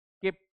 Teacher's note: keep the lips remain closed only but still that sound has been uttered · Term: unreleased P